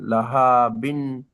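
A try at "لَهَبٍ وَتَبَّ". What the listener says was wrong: বিউ। ওয়াও সঙ্গে জোড়েন, বিউ। লাহা বিউ।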